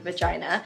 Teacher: this word starts with a buzzy, toothy v sound